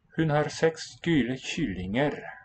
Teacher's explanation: an old ku has become shu, a fricative